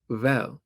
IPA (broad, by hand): βɛ(j)əl